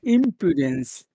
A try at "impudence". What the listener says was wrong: Pew. Not poo. Pew. Pew.